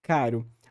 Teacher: A palavra caro, ela tem um R apicoveolar, mas que ele dá só, o modo de articulação dele é só um pequeno tapinha ali no ponto de articulação.